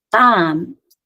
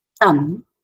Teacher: Khasi also has one phonemic long vowel a, which contrasts with the open vowel a